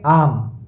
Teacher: दो मात्रा काल का समय लगाएंगे क्योंकि आ दीर्घ स्वर है। तो आम ओम नहीं बोलेंगे।